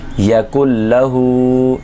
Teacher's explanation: یا زبر یا کاف نون لام ملائیں گے تینوں کو لیکن آواز کاف اور لام کی آئے گی